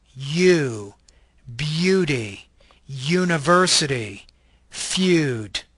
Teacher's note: This is a palatal, glide, voice consonant.